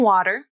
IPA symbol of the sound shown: ɾ